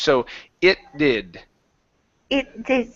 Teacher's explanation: the T is actually pushed into that D sound. It's combined into it.